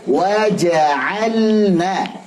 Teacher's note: Wahdis ala sukuni fi ja'alna. Lamnya sukun ketemu nun. Ini bacanya izhar kalau di fi'il kan.